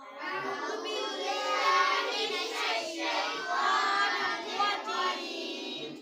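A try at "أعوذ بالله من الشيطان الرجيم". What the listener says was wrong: मोटी है, इसको ज़्यादा लंबा नहीं करना, खड़ी ज़बर को ज़्यादा लंबा नहीं करते। अऊज़ु बिल्लाहि मिनश शैतानिर रजीम।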